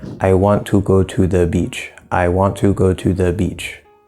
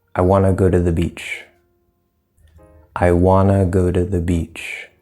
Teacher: And it's just kind of all flat and everything's about the same length.